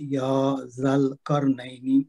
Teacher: यदा, यजल करनैनी, यहाँ पे या जल करनैनी, यहाँ पे खड़ी जबर है जो कि बदल अलिफ मद है और जा को लाम के साथ मिलाएंगे, या जल करनैनी। यहाँ पे रा मोटी पढ़ेंगे, उससे पहले जबर है, नई पे याई लीन है, करनैनी।